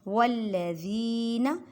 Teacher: یخادعون اللہ یہ والی ہائے حلق کے نیچے والے حصے سے ادا کریں۔ والذین لام کو مضبوطی سے پڑھیں اور لام کو 2 مرتبہ پڑھیں کیونکہ لام مشدد ہے